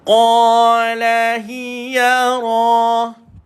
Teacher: Dia bergetar sifat dia tuan-tuan. Dan baris di atas dia dibaca dengan tebal. Tafkhim ra.